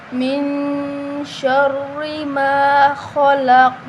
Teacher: میم کے آگے الف مدہ ہے تو اس کو ایک الف کے برابر لمبا کر کے پڑھیں گے۔ خا موٹی ہے، حروف مستعلی ہے تو اس کو موٹا پڑھیں گے۔ قاف کو بھی موٹا پڑھیں گے اور اس پر قلقلہ بھی کریں گے، ٹھیک ہے؟